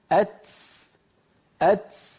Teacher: إن لم نفعل هذه المرحلة وأن اللسان لا ينزل مباشرة إلى تحت، سوف يؤدي هذا إلى أن نتبع صوت التاء بسين كما نسمع من بعض إخواننا، فيقول الواحد منهم أت أت، لأنه بعد أن ينطق التاء ينزل طرف لسانه إلى منطقة السين